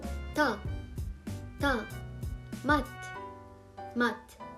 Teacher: the second one which is the Bim T pronounced as T similar to the English T but more aspirated